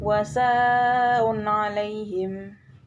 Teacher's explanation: thi'i yang bertemu dengan Hamzah dalam satu kalimat atau kata em cara bacanya dengan dipanjangkan lima harakat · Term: mad wajib muttasil